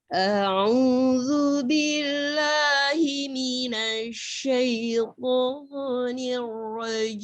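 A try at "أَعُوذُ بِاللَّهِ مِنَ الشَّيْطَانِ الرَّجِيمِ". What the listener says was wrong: Nah, itu Bunda sudah bawa irama kurdi ya. Kita irama nawan dulu. Off-on dulu. A'udzu billah. Dia agak nggak jauh perbedaan antara irama kurdi dan irama nahawan, tapi ayunan kita bedakan. A'udzu billahi minasyaitonir rajim.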